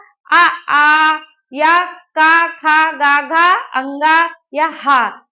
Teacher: पूरा ये का वर्ग लिखा हुआ, और हा और विसर्ग युक्त जो हमारे वर्ण होंगे उनका उच्चारण स्थान जो है वो कंठ है।